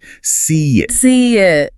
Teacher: The vocal mechanism will often insert a tiny little glide sound to smooth out the transition. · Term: vowel-vowel bridging